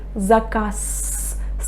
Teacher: I pronounce the voiceless consonant s instead of z.